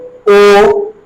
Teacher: तो इसलिए इसको कंठोष्ठ्य वर्ण भी कहते हैं। जैसे ओ डायरेक्ट कंठ से निकल रहा है, लेकिन ओष्ठ की आकार बदल रहा है